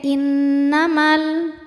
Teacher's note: Karena ada alif didahului harokat fathah, maka mimnya panjang 2 harokat. Namun jika diteruskan jadi pendek, innamal, gugur madnya, namanya takhallus bil hadfi.